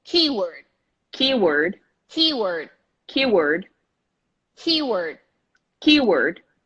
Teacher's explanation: Not K, not K-word, keyword. The stress is on the first syllable.